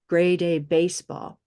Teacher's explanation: this is a nice moving sound that little y there gray comes up to this y